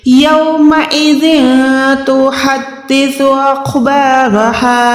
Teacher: یہ ہا ہاتھی والی ہے جو حلق کے نیچے والے حصے سے ادا ہوتی ہے